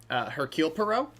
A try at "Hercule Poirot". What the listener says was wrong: No, Hercule Poirot. The H is silent. It's French. Of course, he is Belgian, but the language is French, okay?